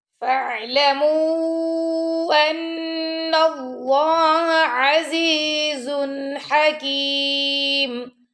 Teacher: اللہ کے لام سے پہلے زبر آ گئی تو اللہ کے لام کو ہم نے موٹا پڑھنا ہے